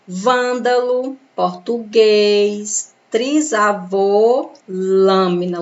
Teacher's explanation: fechado aí vai receber um acento circunflexo vândalo português trisavô lâmina o som é fechado você quase não abre a boca para pronunciar essas palavras